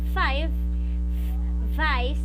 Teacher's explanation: when they are articulated the upper teeth touches the lower lip so you try it yourself and so they are lavia dental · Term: labiodental